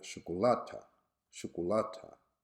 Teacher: shukulata shukulata in arabic also with the stress on the first syllable